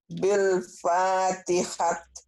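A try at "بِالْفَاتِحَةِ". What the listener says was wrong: Tanya jadi ha ya. Dihentikannya ujungnya ya Bu ya. Kalau baca Quran dihentikan. Jadi sukun.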